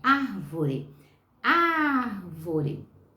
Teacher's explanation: É a antepenúltima sílaba, é o ar. Então, árvore é proparoxítona.